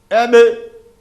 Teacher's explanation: dudağımızı birbirine vurarak çıkıyor